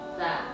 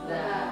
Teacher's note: kalau huruf sa sama za itu ujung lidah agak keluar, agak tergigit